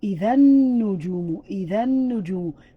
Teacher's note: You took out the L sound and you indicated or emphasized the following letter.